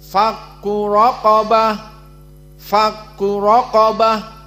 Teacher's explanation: Maka fakku raqabah dalam keadaan dua tafkhim ra dan qaf · Maka di sini fa harf muraqqaqah dan kaf muraqqaqah. Kecuali ra dalam keadaan mufakhamah, raqabah, fakku raqabah, dan qaf mufakhamah.